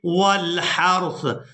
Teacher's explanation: دیکھ رہے ہیں کہ علامات وقف ہے، وقف کریں گے تو وقف کی صورت میں سا کو ساکن کر دیں گے ، ہا کو را ساکن اور سا ساکن کے ساتھ ملا